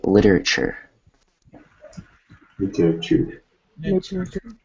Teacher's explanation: it's between vowels, and that means that it's going to be a soft T